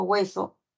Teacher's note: la H es muda no tiene sonoridad lo que sí se escucha es la u es la y por eso constituye un diptongo en la palabra